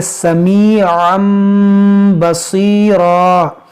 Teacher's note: यहाँ पर तनवीन के बाद बा है तो यहाँ पर इक़लाब होगा